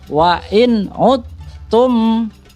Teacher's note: Yang benar adalah wa in udtum. Jadi langsung masuk ke huruf ta-nya dan bertasjid, tapi tidak didengungkan. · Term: idgham kamil